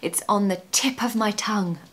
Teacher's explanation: make sure you stress the word tip because we really need this expression to have urgency and a bit of energy because it's frustrating, right?